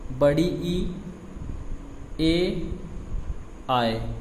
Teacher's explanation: अग्रस्वर का मतलब जीभ के जो आगे के भाग को स्पर्श करके बोला जाए शब्द, वर्ण वो होता है अग्रस्वर